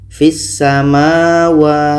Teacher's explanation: ke sa kita baca fat samawat nah ini idgham Syamsiyah karena bunyi lam ini kita tak baca terus masuk ke Sin